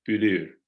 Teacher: Khdrbek and Musaler in general has developed an U, a front high rounded vowel, like in the word for all, bülür.